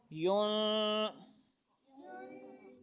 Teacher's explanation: یہ نون پہ اخفا ہو رہا ہے، ناک میں آواز آ رہی ہے